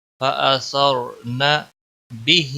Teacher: ہا کے نیچے کھڑی زیر ہے، 1 الف کے برابر کھینچ کر پڑھیں گے